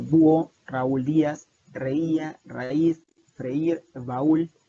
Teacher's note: hay una vocal abierta atona, es decir, que no tiene el énfasis, más una vocal cerrada tónica, es decir, donde recae el énfasis